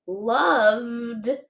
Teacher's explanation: that V makes a vibration. It's a voiced sound. Loved. Okay, so because it's a voiced sound, we feel that vibration.